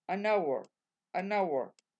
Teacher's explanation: Haciendo la misma liaison. Como esta H es como si no existiese, la N hace la liaison con la vocal.